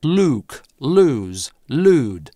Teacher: Никакого [j] в этих словах у британцев нет.